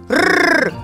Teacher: В нем участвует голос. Значит, звук р-р звонкий. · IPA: [р]